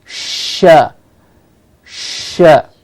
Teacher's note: blade of the tongue articulate to the back area or the alveolar Ridge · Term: Sh sound